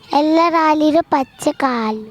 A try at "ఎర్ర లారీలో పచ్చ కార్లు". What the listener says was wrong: ఎల్ల లారీలో కాదు, ఎర్ర లారీలో పచ్చ కార్లు.